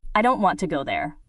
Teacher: Soft, go strong, there, soft. Did you hear how don't and go were stronger? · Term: rhythm